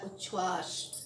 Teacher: जब त जो है वह तालव्य श से योग करता है तो त च तथा तालव्य श छ बनता है। अर्थात नियम क्या बोल रहा है कि त च में बदलता है और श जो है वह छ में बदलता है।